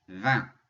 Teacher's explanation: And that leads us to 20. Notice you don't hear the G, you don't hear the T, and we have that nasal IN